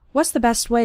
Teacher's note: the T at the end of best also kind of disappears